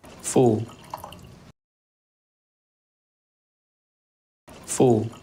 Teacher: 자, 여기 보시면 입 모양이 약간 입 모양이 약간 쪼그라 이렇게 모여지잖아요. 그런데 처음부터 이게 아니라 약간 벌어졌다가 의에서 우로 가는 느낌이에요.